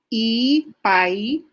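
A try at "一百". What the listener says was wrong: Mali ang intonation sa 1.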